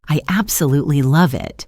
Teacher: If you want to show very strong agreement and enthusiasm, you might say, I absolutely love it, you would stress the word absolutely.